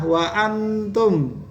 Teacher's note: Itu adalah ikhfa, ada nun sukun ketemu dengan ta